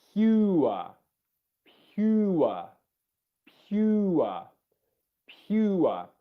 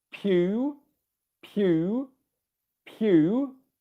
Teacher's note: And I'll just answer the specific point on how do you pronounce pure, because that's there's a y sound in there which can add to the complexity of that word. So for pure, you've got a y sound in there as well.